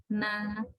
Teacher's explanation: When you say N, also your tongue touches the alveolar ridge.